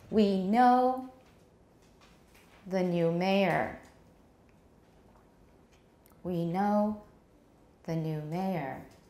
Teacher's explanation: the first thought group pause the new is not really stressed mayor gets the tonic stress of the whole sentence